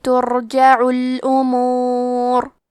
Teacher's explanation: حرف را کا حکم ہے تفخیم، تو ہمیں حرف را کو موٹی آواز میں پڑھنا ہے